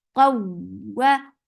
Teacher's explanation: Qawwa ta is heavy, and whenever you find waw and ya with tasdeed you are giving nabar, and nabar is jump of sound. When you are attaching ta with waw, here you are applying nabar.